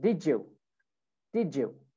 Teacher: if we have a D, okay, and then we have a Y sound, D and a Y, so it makes a J sound